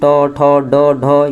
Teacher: ये सब जो है मूर्धा से उच्चारण होते हैं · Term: मूर्धन्य ध्वनि